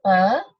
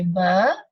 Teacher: when you say power there is no vibration when you say ba it is vibration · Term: voiced